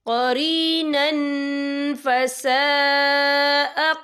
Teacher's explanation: وَمَن يَكُنِ الشَّيْطَانُ لَهُ قَرِينًا فَسَاءَ قَرِينًا، یہ دیکھیں قَرِينًا، نون کے پر تنوین ہے، تنوین کے بعد جو ہے فا آ رہا ہے، اور فا جو ہے اکفا کا ورڈ ہے، تو ہم یہاں اکفا کریں گے، تنوین کی آواز کو ناک میں چھپائیں گے